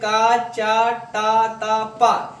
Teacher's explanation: ये दोनों क्या है आपके अघोष और अल्पप्राण दोनों